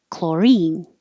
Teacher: the stress is on the second syllable and the CH sounds like a k